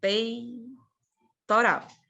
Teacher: Então, o E aqui é vogal, peitoral. O E, ele é mais forte. O I vai morrendo. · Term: ditongo